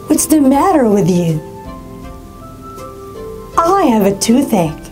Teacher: Again, my tone went down when I said the two sentences.